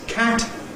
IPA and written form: kæt (cat)